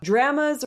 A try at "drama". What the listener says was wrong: Draw. Ah sound. Ah. Not eh. Ah. Not eh.